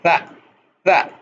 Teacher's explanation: اس کی ادائیگی دال کی طرح ہے سوائے اس کے کہ اس کی ادائیگی میں صوتی تاروں میں تھرتھراہٹ نہیں ہوتی